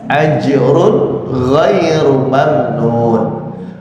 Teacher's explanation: Ini jimnya juga qalqalah. Ingat makhrajnya jim ya, tengah-tengah lidah menempel ke langit-langit atas